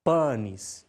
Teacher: em latim não acontecia a nasalização que é muito comum entre nós brasileiros